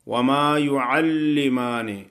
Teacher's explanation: لام کو سختی سے پڑھیں گے، شد ادا کریں گے